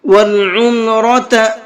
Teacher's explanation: اس را کو منہ بھر کے پڑھیں گے، اس لیے کہ را کے اوپر زبر ہے، اور را کے اوپر زبر ہوتا ہے تو اس را کو منہ بھر کے پڑھتے ہیں۔